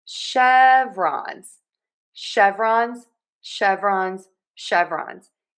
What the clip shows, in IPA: ˈʃɛv.rɑnz